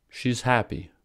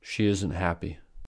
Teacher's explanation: are pronounced clearly while affirmative contractions are reduced that is while affirmative contractions are said quickly quietly at a low pitch with a schwa vowel sound the negative contractions are stressed with clearly articulated vowel sounds